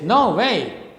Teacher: So now is stressed and way is also stressed. Both syllables are stressed at the same time. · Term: spondee